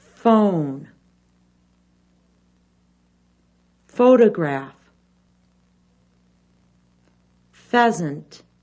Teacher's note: the ph sound is made by closing the mouth almost all the way the top teeth are shown biting down on the lower lip the tongue is in the middle of the mouth air is